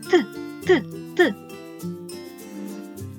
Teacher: руку на горлечко і вимовте звук т чи тремтить воно ні наше горлечко не тремтить голос не працює Тому звук т називають глухим